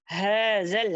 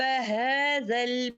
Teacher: हाज़ल हा जो है अक्सल हलक वाला है